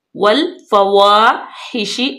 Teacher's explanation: शीन पे जो है वो आवाज को फैलाएंगे मुंह में।